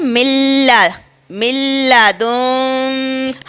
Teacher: آگے ہم نے جو غنہ کیا ہے یعنی گنگنی سی آواز ناک سے نکالی ہے، غنہ کہتے ہیں گنگنی سی آواز نکالنا.